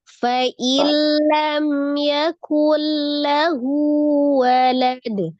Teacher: nun sukun bertemu dengan lam, lam pasti dibaca itu idgham bila guna, dibaca dengan dileburkan tanpa dengung